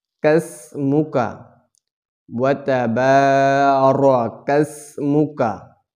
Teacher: প্রিয় বন্ধুরা, এই জায়গায় আমরা সিনে সি আওয়াজে শীষ দিয়ে পড়ব। সিনকে আমরা জিব্বার আগা সামনের নিচের দুই দাঁতের পেটো আগার দিকে লাগাইয়া আদায় করব।